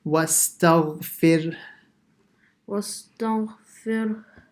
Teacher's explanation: The fir is normal, and then a small ha comes out at the end.